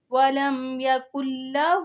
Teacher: جو بیچ میں نون ساکن ہے وہ نہیں پڑھی جائے گی کیونکہ آگے تشدید آ رہی ہے، تو جب آگے تشدید آ رہی ہو تو بیچ میں جو ساکن ورڈ آ جاتا ہے وہ نہیں پڑھا جاتا۔